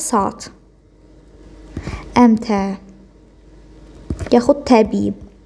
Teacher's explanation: İki dənə saitdən biri düşəcək, digəri uzun tələffüs olunacaq. Biri düşür, digəri uzun tələffü olunur.